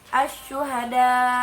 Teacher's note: Nah, jadi sya-nya itu lebih besar ya, lebih ditekan. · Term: Tafashi kubro